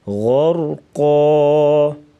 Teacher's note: غین اور را کو موٹا کر کے پڑھیں گے اور قاف کو بھی وقفاً موٹا پڑھیں گے